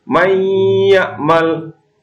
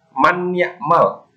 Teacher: kalau idgham bi gunnah itu artinya adalah mendengung, atau kalau orang Jawa itu ngeremeng, hidungnya seperti bergetar. Contoh, mayyamal, terdapat nun mati bertemu ya.